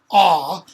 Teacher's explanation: If you just say the vowel aw, notice your mouth's open and your tongue's kind of down flat.